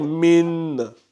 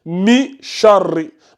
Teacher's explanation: c'est comme si le noun ici, c'est comme si il n'existait pas. En fait, tu l'entends juste un peu. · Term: ikhfa